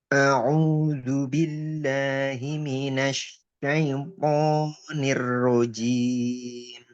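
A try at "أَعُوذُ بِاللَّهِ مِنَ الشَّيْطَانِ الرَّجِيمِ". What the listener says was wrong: Nah, mesinnya kurang ngalir. Minasyai. Minasyai. Jangan terputus. Minasyai. minasyai. minasyai. Minasy. Kurang panjang antum. Minasyai.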